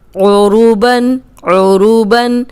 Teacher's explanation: عروبا عروبا عین کی آواز آنی چاہیے حلق سے